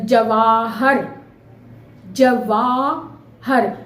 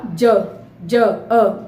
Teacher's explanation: जिसको बोलने में पूरा मुंह खुला वो बड़ा आ, और जिसको बोलने में मुंह नहीं, हल्का सा मुंह खोला